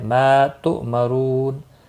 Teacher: ما الف مدہ ہے، ما تؤمرون، اس کو بھی ایک الف کے برابر کھینچ کر پڑھیں گے اور را پیش کی وجہ سے پر پڑھا جائے گا۔ رو واو مدہ ہے، ایک الف کے برابر کھینچ کر پڑھیں گے اور نون وقف کی صورت میں نون ساکن پڑھا جائے گا، وقف بالاسکان ہوگا۔